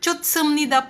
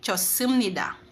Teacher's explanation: Kapag final, T. Pero, kapag daw po si H sinundan ng S, ang kanyang pronunciation ay magiging silent